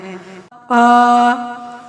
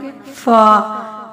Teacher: और इनके मखरिज को शफवी मखरज बोला जाता है। हर फ ऊपर के दो दांतों के किनारे और निचले होठ के तर हिस्सा से अदा होता है। पा फ नहीं पढ़ना।